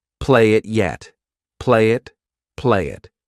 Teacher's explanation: We can combine play and it together. I'll take that Y and I'll use it to connect.